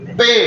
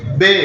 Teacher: Kalau P itu lebih ditekan, kalau B enggak usah ditekan juga sudah keluar B-nya ya.